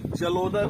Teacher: आ और ऊ मिलाकर ओ हो जाएगा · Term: गुण स्वर संधि